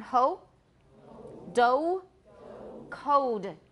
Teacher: In American English, it's close to O, but it is a diphthong. It's not just O, If it were a monophthong, it would sound funny to my ears.